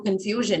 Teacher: that stress on the second syllable is retained